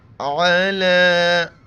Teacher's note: علی، عین زبر ع، لام کڑا زبر لا کھینچیں گے، یا نہیں پڑھا جاتا